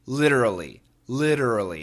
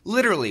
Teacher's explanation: Usually in America we say literally. Literally. It's a flap T.